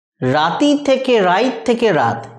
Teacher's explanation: যে হস্যইটা সরে এলো অপিনিহিতি প্রক্রিয়ার দ্বারা সেটা লুপ্ত হয়ে গেছে দিয়ে হয়েছে রাত। · এরপরেতে দেখো রাতি থেকে রাইত থেকে রাত, এখানেতেও তযুক্ত হস্যই মানে ব্যঞ্জনযুক্ত স্বর হয়েছে, দেখো হস্যই যুক্ত ত, মানে আগে অপিনিহিতি ঘটে গেছে, ব্যঞ্জন ধ্বনির আগে স্বরধ্বনিটা চলে এসছে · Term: অভিশ্রুতি